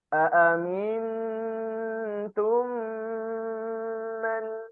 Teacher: ketika mim sukun bertemu mim didengungkan bacaannya ya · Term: idgham syafawi